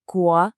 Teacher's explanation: Next, that second tone on gu has to rise clearly.